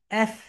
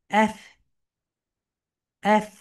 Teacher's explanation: আমরা যখন এফ উচ্চারণ করব আমাদের উপরের দাঁত নিচের ঠোঁটের সঙ্গে হালকা টাচ করবে।